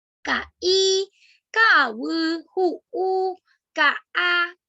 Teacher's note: el puso es una consonante glotal intervocálica. ¿Qué quiere decir eso? Que va entre vocales y produce una interrupción entre ellas.